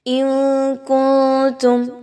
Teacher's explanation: نون کی آواز کو آپ نے ناک میں لے کر چھپانا ہے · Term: اخفا کا قاعدہ